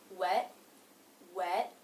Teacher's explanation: I put my tongue up into position for the T, wet, wet, but I don't release the sound. I just go into the next word. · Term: stop consonant